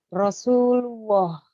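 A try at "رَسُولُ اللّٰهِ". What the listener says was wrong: Nah, masih ada huruf W atau waw sedikit. Rasulullah. Sunya panjang 2 rokat. Nanti coba latih-latih terus, hilangkan yang huruf wawunya atau W. Jadi jangan sampai ada Rasulullah itu, atau Rasulullah, lulwa tidak, tapi Rasulullah, gitu.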